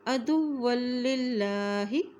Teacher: اللہ کا نام باریک ہوگا کیونکہ اس کے نام سے پہلے یہ للہ زیر ہے۔